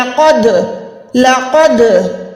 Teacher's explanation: لقد، قوف یہاں پر 2 نقطوں والا ہے، موٹا حروف ہے، دال کلکلا میں آتا ہے، کلکلا 5 حروف ہوتے ہیں، قوف تو با جیم دال، تو یہاں پر دال کی ادائیگی کرتے ہوئے آواز کو لوٹائیں گی، وائبریشن ہوگی، لرزش ہوگی۔ لقد، لقد، قوف کو پروپر موٹا ادا کرنا ہے۔